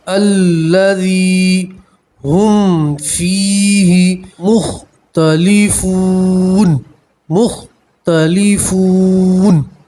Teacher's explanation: یا مدہ کسے کہتے ہیں کہ یا کے اوپر جزم ہو اور اس سے پہلے والے حرف کے اوپر زیر ہو تو اسے یا مدہ کہتے ہیں، ٹھیک ہے۔ یا مدہ میں آپ ایک الف کے برابر کھینچ کر پڑھیں گے